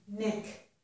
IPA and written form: nɪk (knick)